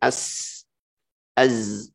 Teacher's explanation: Yang terakhir adalah rokhawah ya, lembut, mengalir suaranya ketika mengucapkan huruf-huruf tersebut. Hurufnya adalah selain yang di atas, selain ajid, qatin, bakat, dan selain lin umaro seperti sin, wanya as, az ya.